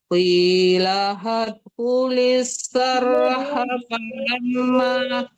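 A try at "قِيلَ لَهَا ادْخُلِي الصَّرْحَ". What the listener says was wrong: lamnya ada dua di situ, bukan qilahat. Qilahat. Ada dua lam di situ, jangan qilahat aja. Dua.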